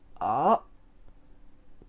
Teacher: It's a long ah with a glottal stop at the end.